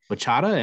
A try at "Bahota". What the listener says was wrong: Bahota, the C silent.